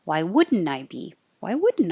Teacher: And now the N connects to the I.